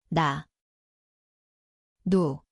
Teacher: Ia berbunyi seperti N, tempatnya di hujung lidah, gusi atas. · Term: 니은